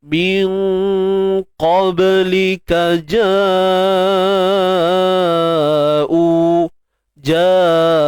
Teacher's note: Qablika, huruf ka pada atas, ka macam biasa. Ba ni sukun kan, qalqalah sughra, lantunan kecil ataupun lemah.